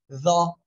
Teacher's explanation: এই যে দেখেন আপনারা জিব্বার আগা এই সামনের উপরে দুই দাঁতের আগার সঙ্গে লাগিয়ে উচ্চারণ করতে হবে